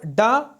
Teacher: ड यह सघोष अल्प प्राण और मूर्धन्य है